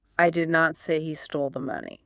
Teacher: put all the stress, make it louder and longer on the very first word, I.